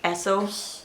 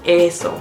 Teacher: I hear a lot of times people saying the e in Spanish like eh, like ehso, but just remember it's a longer ayy sound, eeeso.